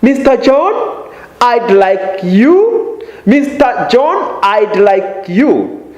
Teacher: Notice the rising intonation on Mr.